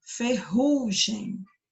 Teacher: a sílaba do Meio você falou com mais força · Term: sílaba tônica